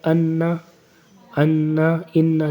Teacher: تو نون کی آواز آ رہی ہے آپ کو انا، تو آپ کی زبان لگ رہی ہے اوپر دانتوں کے پیچھے، وہاں لگ رہی ہے آپ کے، تو وہاں زبان نہیں لگنی چاہیے حروف اخفاء میں۔